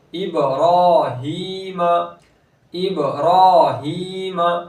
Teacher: با حرف قلقلہ میں سے ہے تو کیا کہتے ہیں با کی آواز لوٹتی ہوئی واپس آئے گی